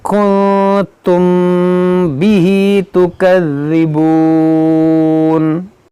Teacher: یہاں دیکھیں نون ساکن کے بعد تا ہے, یہاں پر اخفا ہوگا, یا یہاں پر میم ساکن کے بعد با, یہاں پر اخفاء شفوی ہوگا, یعنی یہاں دونوں جگہ غنہ ہوگا.